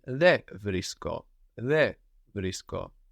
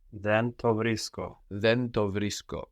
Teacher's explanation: With some words, like then, for example, you may hear and see in writing the end of then being dropped before certain sounds